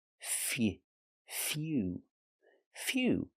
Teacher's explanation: This word uses the y-yu sound like you.